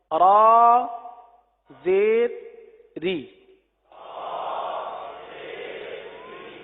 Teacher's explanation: را کے نیچے زیر آ جائے تو را کو باریک پڑھتے ہیں